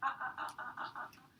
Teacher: Now, when you phonate the ah, and you get vocal fold vibration, right, your soft palate is going to move up and back. And when you do that glottal stop in between, ah, the palate is going to drop down in between. But you got to really stop to have that happen.